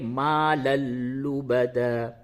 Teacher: ما لل غنہ نہیں ہو رہا ہے، ڈائریکٹ ملا دیں گے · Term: ادغام بلا غنہ